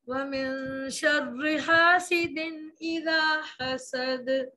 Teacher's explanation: سین میں سیٹی دال پہ نرمی سے قلقلہ